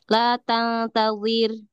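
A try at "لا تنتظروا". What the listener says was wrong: Terus rohnya jangan dihilangkan. Ada alif.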